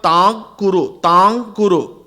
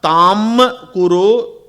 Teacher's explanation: Im followed by ku will become anku. Not angu. Here it is anku. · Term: Anuswaram